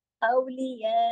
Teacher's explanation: इसको यौ मोटा नहीं कर देना, जुबान को ऊपर नहीं उठा देना है, बारीक तरीके से औलिया। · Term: बारीक हरूफ